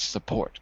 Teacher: Second syllable is the stress.